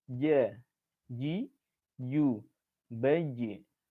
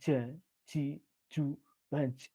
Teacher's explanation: Karena dia di tengah lidah, maka bagian tengah lidahnya agak dinaikkan sedikit.